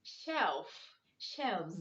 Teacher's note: in these words the s is making the z sound